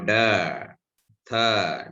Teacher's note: We know da, tha, dental sound